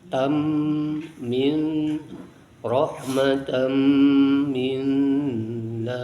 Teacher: tanwin bertemu mim dimasukkan kepada huruf mim. Idgham, namanya idgham dengan menggunakan guna, dengan disertai guna.